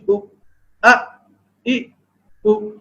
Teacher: یہ حلق کے نچلے حصے سے ادا ہوتے ہیں. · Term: حمزہ